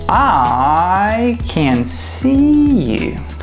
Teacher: We also want to make that I a bit shorter because I is not much stressed, but we still want to put some substance to that I to make sure we step on a firm ground.